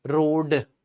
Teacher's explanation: जीभ ऊपर रही, झटके से नीचे नहीं आई